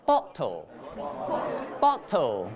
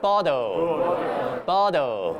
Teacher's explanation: in British English, it's just like the normal T. But in American English, it sounds like a D.